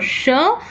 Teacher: Okay, so we have, it is, when we talk about the three-term label for sh, it is a voiceless post-alveolar fricative